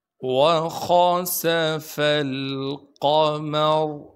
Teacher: قاف کو موٹا کر کے پڑھیں گے، میم کو بغیر کھینچے پڑھنا ہے۔ را کو وقف کی حالت میں اور جب آگے ملائیں گے دونوں حالتوں میں را کو موٹا کر کے پڑھنا ہے